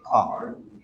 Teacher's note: what happens is that we don't pronounce the R's. So we don't say car, we say car.